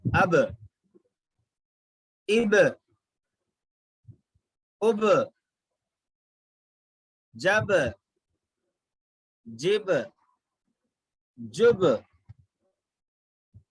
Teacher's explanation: बा निकलता है दोनों होठों के कच्चे वाले हिस्से से, ठीक है, गीले हिस्से से बा निकलता है। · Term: टक्कर खा के अलग